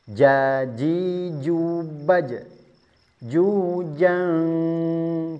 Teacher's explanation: Tengah lidah bertemu dengan langit-langit mulut sempurna harus nempel. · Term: huruf jim